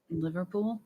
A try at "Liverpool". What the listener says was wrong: Liver, liver, Liverpool, Liverpool. Say an A, like an A. Don't say hard R's. Do an A after the V. Liverpool.